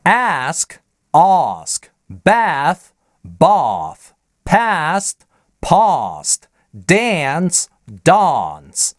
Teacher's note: И существует целый набор слов, в которых в американском акценте произносится переднее «а», там, где в британском английском звучит заднее «а»